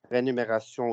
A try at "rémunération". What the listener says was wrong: vous trompez dans rémunération. C'est le contraire. Il faut prononcer le M avant le N.